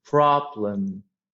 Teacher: i would start with a falling intonation and then i would just go up with a rising one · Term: rising intonation